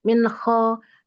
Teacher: huruf kho ada gesekan ya sedikit, meskipun sedikit tetap ada gesekan